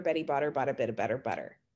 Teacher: b actually is what's known in linguistics as a bilabial meaning you're you're using both your lips to to make that